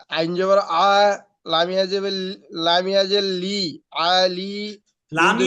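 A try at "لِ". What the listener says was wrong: লামিয়া যে লি, ভাই লামিয়া যে লি একবারে দ্রুত কেন বলতেছেন? আইন জবর যেমন বলতেছেন, লামিয়া যে লি তেমন কেন হচ্ছে ভাই?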